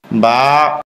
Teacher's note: স্বাভাবিক অবস্থায় মুখ যেমন ঠোঁট দুইটা মিলে থাকে মিলন ঠোঁট খুলে দিলেই হয়ে যায়